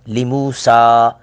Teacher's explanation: لموسا، سا پر بھی مد منفصل، 2 الف کے برابر اس کو کھینچیں گے